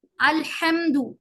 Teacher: اس کا ح جو ہے حلق کے بیچ سے نکالا جاتا ہے. اگر ہم نے الحمد کہا تو ہا اور ح میں اگر ہم نے فرق نہیں کیا تو یہ مخارج کی غلطی ہوگی.